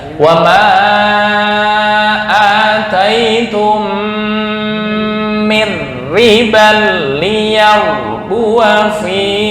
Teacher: Dengung, mim mati bertemu mim.